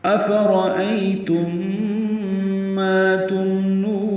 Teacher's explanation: میم ساکن کے بعد میم آنے کی وجہ سے ادغام ہوگا، یہاں پہ غنہ کریں گے